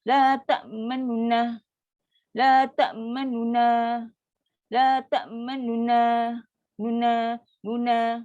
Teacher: Tapi bila baca secara raum, Nu ni 1/3 bunyi je. Jadi berlaku sikit dan cepat.